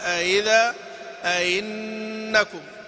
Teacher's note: إذن مرة أخرى في المكسورة، أئذا أئنكم يقرأ قالون وأبو عمرو وأبو جعفر بالإدخال، تسهيل مع الإدخال، أئذا أئنكم، وورش وابن كثير ورويس تسهيل بلا إدخال، أئذا أئنكم، وقرأ هشام بالإدخال وعدمه، أئذا أئذا أئنكم أئنكم.